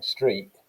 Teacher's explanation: sounds it's actually substitution because if you're saying streak like that on the end there that's a glottal stop